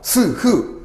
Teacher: 소리가 자연스럽게 나오다가 입 안에서 마찰이 일어나는 소리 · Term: 마찰음